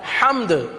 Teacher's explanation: حمد، حمد کلمہ ہی مکمل نہیں ہوا. حمد دال کا نام لینا ضروری ہے، دال پر قلقلہ ضروری ہے، تو اسے پورا ادا کیا جائے گا تب یہ ادا ہوگا.